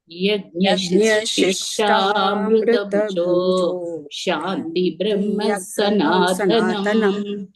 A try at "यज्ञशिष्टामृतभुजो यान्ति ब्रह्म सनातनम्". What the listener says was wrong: यान्ति गच्छन्ति तो शान्ति नायं लोकोऽस्त्य यज्ञस्य कुतोऽन्यः कुरु सत्तमा